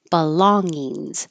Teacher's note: this middle G NG combination is the NG where the back of your tongue goes very high